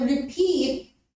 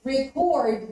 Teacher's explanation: if you shift the stress to the second syllable it becomes present which becomes a verb